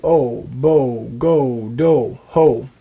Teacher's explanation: the vav only makes the O sound. It doesn't make the vo sound. Therefore, Aleph, Cholem Vav is pronounced O.